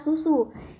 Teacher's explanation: dilafalkan sebagai bunyi U tinggi atas belakang bundar apabila berada pada silabel terbuka